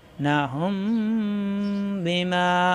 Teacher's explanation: নাহুম বিমা গোপন গুন্না বলা হয় ইকফা গুন্না নাহুম বিমা অর্থাৎ ঠোঁটের ভিজা অংশ থেকে গুন্নাটা হবে